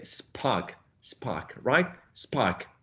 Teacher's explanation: So there's some influence of this initial sound into this one, right? So when you're articulating the sound p, it's not a full block of air. I mean, still a block of air, but without the aspiration feature that is present when this sound is in initial position. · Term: unaspirated